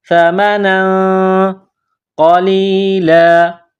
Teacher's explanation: تنوین کے بعد قاف ہے، حروف اخفا ہے، تو یہاں آواز ناک میں چھپائیں گے اور اس ناک میں آواز چھپانے کو اخفا کہتے ہیں۔